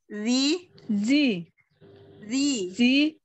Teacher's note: Z-nya itu lidahnya digigit sedikit. · jadi dia di ujung lidah ada getaran sedikit